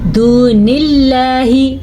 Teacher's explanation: लफ्ज़ अल्लाह को हम बारीक पढ़ेंगे क्योंकि लफ्ज़ अल्लाह से पहले ज़ेर है